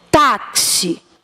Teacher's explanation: a palavra taxi eu verifico onde é que tá a tônica quando eu faço a pronúncia táxi a tônica tá na penúltima